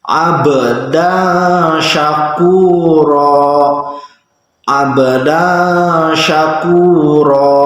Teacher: Jadi bacanya harus samar, bukan abdan syakuro. Tidak boleh jelas karena ini tidak terkena hukum idhar, tapi terkena hukum ikhfa.